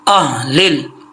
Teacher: मिन अहलिल किताब, यहाँ पे हा मोटी है, ये जो हा है इसका ताल्लुक सीने से है, हल्क से नहीं है